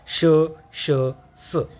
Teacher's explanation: उष्मे किंवा घर्षक यांचा उच्चार करताना तोंडातून हवा बाहेर फेकली जाते